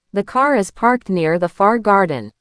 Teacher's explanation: In America and Canada, the R is a hard R. It's rodic. Your tongue curls back, but it doesn't touch the roof of your mouth. Think of a dog growling gr.